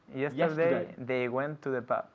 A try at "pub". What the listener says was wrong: They went to the pub. Pub. We say pub, not poof or pov. Pub. Con un B fuerte. Pub.